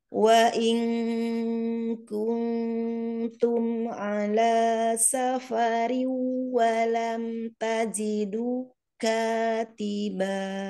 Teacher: Umi di safarin ada idgham, asalkan ketemu waw, idgham diguna. Safarin masuk hidung, masuk sebagian al-khoisum